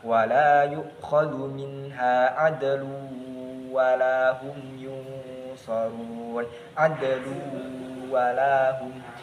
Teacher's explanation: Nah, jadi idgham bi gunnah terjadi apabila ada nun sukun atau tanwin bertemu dengan salah satu dari huruf idgham bi gunnah, yang hurufnya itu ada ya, nun, mim, dan wawu, yang kita singkat biasanya dengan yanmu. Cara membacanya adalah dimasukkan huruf nun itu tadi dimasukkan ke huruf setelahnya dan dibaca dengan dengung. · Jadi adlun itu adalah tanwin dan masuk kepada huruf setelahnya yakni wawu, adlu. Jadi tanwinnya tidak kelihatan karena masuk kepada huruf setelahnya